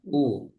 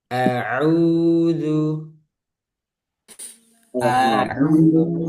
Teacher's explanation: Au jangan o tapi u